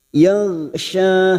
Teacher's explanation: huruf ghain bukan qalqalah, maka kita tahan jangan sampai memantul. Yaghsha ada hukum mad tabi'i.